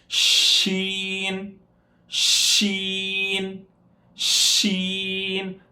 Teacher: تھوڑا سا فاصلہ رکھیں گے جس سے شین ادا ہوگا اور منہ کے اندر ایک ساؤنڈ بھرا جائے گا، پھر اس کے بعد شین باہر نکلے گا. · تفشی اس کی صفت ہے پھیلنا منہ کے اندر. تو اسی لیے ساؤنڈ کو بند کر دیں گے، زبان کو اوپر کے تالو سے لگا دیں گے تو اس سے شین ادا نہیں ہو سکتا.